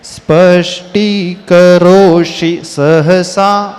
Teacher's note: यहां पर मूर्धन्य श है फिर उसके बाद तुरंत दंती सा का उच्चारण · स्पष्टीकरोषि सहसा, देखने में बहुत सरल लग रहा है, कुछ इजी है बहुत, पर उच्चारण में बहुत यहाँ पे ट्विस्ट हो जाएगा। स्पष्टीकरोषि, यहाँ पे मूर्धन्य श है, फिर उसके बाद तुरंत दंती स का उच्चारण।